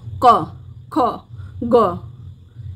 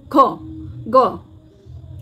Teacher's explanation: वर्ग की सारी ध्वनियां कंठ ध्वनियां है आप उच्चारण करके देखिए आपकी जीवा का जो पीछे का भाग है जीवा मूल है वह स्पर्श करेगा कोमल तालू को